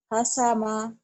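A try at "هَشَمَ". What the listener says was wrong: Hasyama. Shin. Hasyama. Hasyama.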